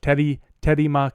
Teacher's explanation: the r sound sounds a lot to me like a bit of a flap and not a full traditional English R